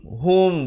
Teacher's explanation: Ha baris dhammah bunyi hu bukan bunyi ho.